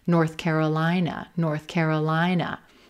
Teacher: We're not going to stress those directional words, north or south. We're going to stress the second word, Carolina